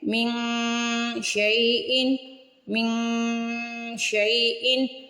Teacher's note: اخفا کرتے ہیں، یعنی من کی جو آواز ہے، من پہ جو نون کی آواز آ رہی ہے اس کو ناک میں چھپائیں گے، اس کو کہتے ہیں چھپا ہوا غنہ۔ من، یہ ہے من شیئن، شین چونکہ حروف اخفا میں سے ہے، من پہ اخفا کریں گے۔